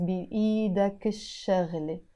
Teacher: because the sheen is a sun letter, so I don't pronounce the ل. I have to say بإيدك الشغلة.